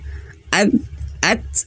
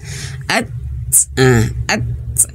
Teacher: huruf Ta ini Ya dia memiliki sifat syiddah tertahannya suara at nah dan Hames mengalirnya angin at at Tahan dulu baru